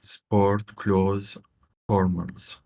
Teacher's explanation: that word close, you never pronounce the th. It's just like close the door.